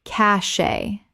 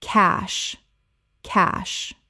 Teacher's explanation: Common mispronunciation, cachet Correct pronunciation cache One syllable only. It rhymes with cash. The e is completely silent.